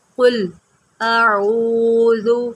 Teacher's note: اب یہاں پر قاف کو موٹا کریں، اور اس میں جو مین غلطی ہوتی ہے وہ یہ ہوتی ہے کہ اس کو پڑھ دیا جاتا ہے قل اعوذ۔